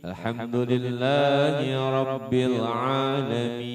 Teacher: itu mad wajib muttasil, panjangnya enam harakat ya. Tetapi kalau misalnya kita mengkondisikan kita bisa jadi empat.